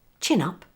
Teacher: make sure you link from n in chin to the following u in up